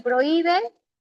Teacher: en prohíbe, ¿dónde lleva la mayor fuerza de voz? La I. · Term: hiato acentual